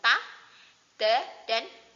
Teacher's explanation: ujung lidah ditekan ke pangkal gigi kapak bagian atas. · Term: makhraj ta